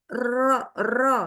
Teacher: dia bergetar atau ada naik turun di ujung lidahnya ya getar kalau lam bergerak kalau ro bergetar gitu ya Nah